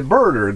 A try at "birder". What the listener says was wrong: You said birder. It sounded like burger, like a hamburger. Birder, okay. Because the way you pronounce it, it could be misconstrued as burger.